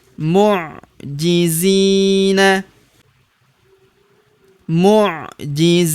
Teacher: Huruf zi kita panjangkan dua harakat karena terdapat ya sukun di depannya